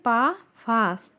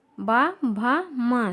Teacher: पा वर्ग में पा, फा अघोष है। बा, भा, मा सघोष है।